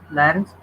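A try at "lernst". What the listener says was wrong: Was learns do. Learns. ल ओ नहीं, ले ले. Learns, le. Because now here again I am saying e is a in German. E means a, so learns.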